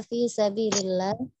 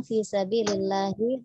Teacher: haknya terdengar dari tengah tenggorokan ya, kurang turun dari pangkal tenggorokan, haknya hak besar.